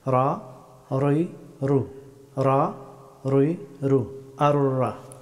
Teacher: রা হরফটি উচ্চারিত হয় জিহ্বার সামনের অংশের পিঠ এবং সোজা উপরের তালুর শক্ত অংশ চুইয়ে রা হরফটি উচ্চারিত হয়।